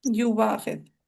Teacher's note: اور ورش اور ابو جعفر کے لیے ابدال بالواو کرنا ہے، صرف سمپل یو واخذ۔